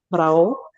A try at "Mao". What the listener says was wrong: Mao, yeah. So the sa and the ra are silent. Mao.